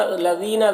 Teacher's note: ذال کو باریک پڑھیں گے